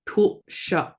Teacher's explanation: We have the glottalized L, tul. S wedge makes the sh sound, and that Q is back of the throat.